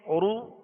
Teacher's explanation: دونوں ہونٹوں کو کامل گول کر کے ادا کریں گے. اگر کامل گول نہیں ہوں گے تو پھر رو سو لو یہ بن جائے گا، اور یہ ہے معروف مجہول طریقہ. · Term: پیش